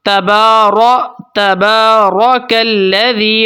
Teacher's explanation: را کو موٹا کر کے پڑھیں گے